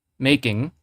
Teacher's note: The E part actually has the full duration, while the I is actually just to mark that it's a diphthong.